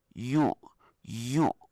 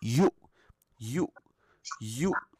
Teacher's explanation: Dia tak sengau sebab tak keluar kat hidung. Suara suara dia akan keluar dekat 100% kat mulut.